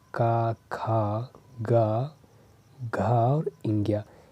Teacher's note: कंठ से इसकी ध्वनि जब हम बोलते हैं का वर्ग की कोई भी ध्वनि तो कंठ से स्पर्श करते हुए निकलता है।